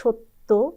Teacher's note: মানে দুবার উচ্চারণ হবে প্রথমটা হচ্ছে হসন্ত যুক্ত উচ্চারণ আর পরেরটা হচ্ছে ওকারান্ত যেমন সত্য আমরা সত্য বললে সেটা ভুল উচ্চারণ হবে বলতে হবে